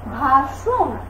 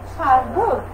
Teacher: মধ্য অয়ের আগে আকার থাকলে সেই অয়ের উচ্চারণ অয়ের মতো না হয়ে ওয়ের মতো হয়ে যায়